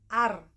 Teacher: zaltiyah laswiyah atau disebut juga dengan apico alveolar